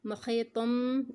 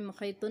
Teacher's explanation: इसको हमने मुहीतुन नहीं पढ़ा, छोटा मीम है ऊपर, यहाँ पर हम इसको मुहीतुम पढ़ेंगे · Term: मीम की आवाज़